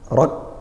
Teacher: Kemudian ra berharokat fathah, kita baca tebal, tafkhim, rak, sama kafnya ditekan dulu, suaranya tertahan, rak, baru nanti didesiskan nafasnya, rak.